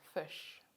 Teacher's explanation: the distinctive vowel occurring in fish this vowel is a high central unrounded vowel · This vowel is a high central unrounded vowel, and the symbol for it, as you can see on the chart, is a barred I.